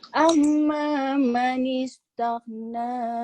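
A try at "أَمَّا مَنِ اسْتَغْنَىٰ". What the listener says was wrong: Amma coba lebih ditahan. Mim bertasdid itu bacaan apa? Panjangnya piro? 2 sampai 3.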